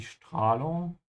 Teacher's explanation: make sure you start with a sh sound because the S comes before a T